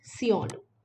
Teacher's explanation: Because of U in the second syllable, E underwent a change and became Sionu. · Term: back mutation